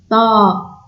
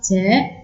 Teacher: on prononce avec un son plus grave. Ta, c'est pas T, c'est Ta.